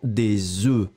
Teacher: C'est-à-dire qu'au singulier, c'est un œuf, et là, vous prononcez le F final, mais quand vous le mettez au pluriel, la prononciation change radicalement. Le F n'est pas prononcé, et vous allez le prononcer comme un E.